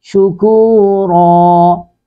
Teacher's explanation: تنوین ہے اس کے بعد وقف آیا، تو یہ اس لیے ایک زبر کو اڑا دیا، دوسری زبر کے ساتھ الف کو ملا کے اس کو مد الف مدہ بنا دیا